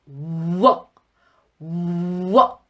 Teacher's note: 영어의 워 사운드는 입술을 정말 뽀뽀하듯이 이렇게 쭉 내밀어야지 돼요. 그리고 입 안에 바람을 가득 담았다가 뿜어내는 소리입니다.